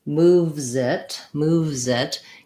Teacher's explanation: trying to have my V sound, move, and then put my Z sound on the next word. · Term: linking